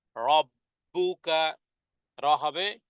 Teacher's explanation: রহ মুখটা ভরে যাবে মোটা হবে